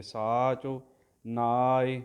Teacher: ਸਾਚ ਵਿੱਚ ਚੱਚੇ ਦਾ ਔਂਕੜ ਸੱਸੇ ਕੰਨਾ ਸਾ, ਚੱਚੇ ਔਂਕੜ ਝੋ, ਸਾ ਲੰਬਾ ਕਰ ਦਿਓ, ਚੱਚੇ ਔਂਕੜ ਸੰਕੋਚ ਕੇ